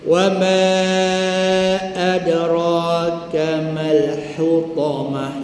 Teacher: ta bulat tetap kita baca dengan ha bulat ketika wakaf